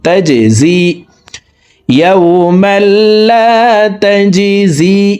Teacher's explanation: জিম কলকলার হরফ নিচের দিকে ধাবিত করে ধাক্কা দিয়ে উচ্চারণ করব।